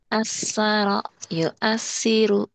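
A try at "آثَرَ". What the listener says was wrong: Itu mah belum cedal. Itu mah masih asaro. Masih saya suka S itu sin. Ini sa. Asaro. Kayak manja gitu. Asaro yu asiru gitu. Sa. Cedal.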